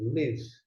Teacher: alguns pronunciam Lev, som de E fechado